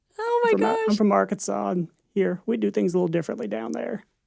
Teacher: It's like the vocal fry and the vocal fatigue.